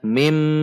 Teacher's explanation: nun sukun dilebur dan masuk ke huruf mim, atau dimasukkan ke huruf mim, atau idgham bi gunnah dengan dengung, masuk dengan dengung. Sehingga dibaca mim, bukan dibaca min, namun dibaca mim.